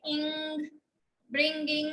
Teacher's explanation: जैसे इंग, ब्रिंगिंग बोलते हैं तो नेजैलिटी हो जाती है, नाक में आवाज चली जाती है